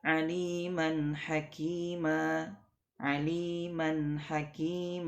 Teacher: Mad iwad ini dibaca panjang dua harakat